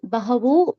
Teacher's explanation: the visarga changes to O here due to Sanskrit grammar